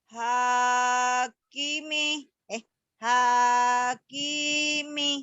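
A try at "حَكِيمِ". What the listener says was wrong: Salah. Yang panjangnya ki-nya doang.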